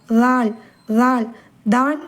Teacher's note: நுனி நாக்கு முன் மேற்பற்களின் வலது ஓரத்தை ரொம்ப லேசா தொட தொட்டா போதும். குரல் வந்து கொஞ்சம் மெள்ளியதான் இருக்கணும். அழுத்தி தால் அப்படின்னு சொல்லக்கூடாது.